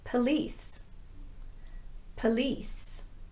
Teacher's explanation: This word uses the unrounded sound, and it's the shorter schwa vowel because it's in the unstressed syllable.